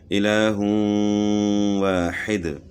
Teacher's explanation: دو پیش کی تنوین کے بعد حروف یر ملون میں سے واو ہے تو ادغام مع الغنہ ہوگا